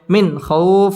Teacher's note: পড়তে হবে ওয়া আমানাহুম মিন ইজহার নুন সাকিনের বামে খ আসছে খ ইজহারের হরফ গুন্না ছাড়া স্পষ্ট করে পড়তে হবে